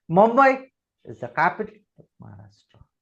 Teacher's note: महाराष्ट्र इज in a falling intonation.